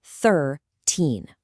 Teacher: Thirteen is pronounced thir-teen, with that high stress right at the end.